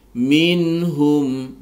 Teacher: nun sukun bertemu dengan ha dibaca izhar halki, dibaca jelas tidak boleh didengungkan